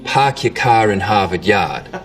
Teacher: We call this the start vowel. In Boston, it's usually pretty fronted.